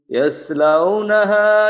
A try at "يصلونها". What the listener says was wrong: এইখানে এই সদের উচ্চারণটাকে সিনের থেকে একটু দূরে নিতে হবে, ইয়াস আর ইয়াস ইয়াস ইয়াস লাউনাহ। সদর উচ্চারণ সহ মোটামুটি ভাবে যদি দাঁতের থেকে দাঁত আলাদা রাখা যায় তাহলে সিনের থেকে পার্থক্য হয়ে যায়, আর মূল পার্থক্যটা হবে একটু মোটা করার মাধ্যমে আর কি।